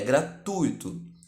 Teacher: a pronúncia culta de gratuito é gratuito com a tônica no u do ditongo ui trata-se de uma trata-se de uma palavra paroxítona terminada em o